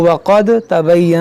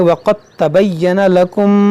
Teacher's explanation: اگر پڑھتے تو ثمودا الف مدہ بنتا، تو اس الف کو نہیں پڑھیں گے، اس کو پڑھیں گے وعادا وثمود وقد تبین لکم. یہاں پر دال اس تا میں داخل ہوگا، یہاں پر دال کی آواز نہیں آئے گی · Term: ادغام